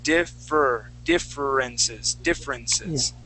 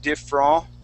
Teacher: the fur is held more in the front of your mouth